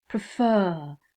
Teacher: is at the end of the word words for example prefer the stress is on the second part of the word